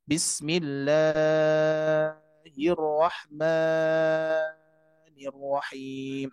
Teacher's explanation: terlalu panjang membaca Mad dua harkat